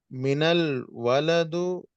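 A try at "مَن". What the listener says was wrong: मिनल नहीं होगा यहाँ पर। मिन कैसे होगा? मिन होगा या मन होगा, बताइए।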